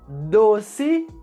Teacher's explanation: com a letra O com o som fechado, a letra C com o som de S e a letra E com o som de I no final da palavra